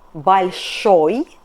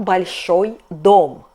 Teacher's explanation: о in this ending is stressed, so we have -ой. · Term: stressed ending